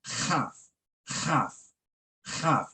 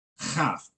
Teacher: You feel the plosive in the back of your throat. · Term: guttural